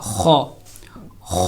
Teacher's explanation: اسی طرح خو، یہ بھی حلق کے درمیان والے حصے سے، اور خو حلق کے اوپر والے حصے سے ادا کیا جائے گا